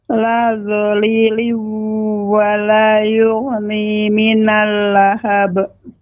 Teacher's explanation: tanwin dimasukkan ke huruf waw disertai dengan gunnah dan gunnahnya ini dipanjangkan. La dhaliliu dengan dimonjongkan bibirnya. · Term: Idgham biguna